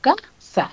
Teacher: Según su ubicación, está en la penúltima. En la penúltima sílaba. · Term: grave